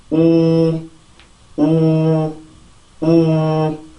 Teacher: 그렇게 되면 입안에 굉장히 큰 공간이 생겨서 그 공간을 울리면서 나오는 소리가 바로 W라고 하는 전이음의 소리예요. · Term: W라는 전이음